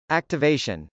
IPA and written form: .æktəvˈeɪʃən (activation)